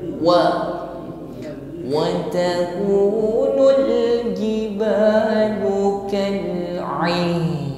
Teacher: Wa mengucapkan wawu dihimpun bibir ke depan sehingga bunyinya ringan.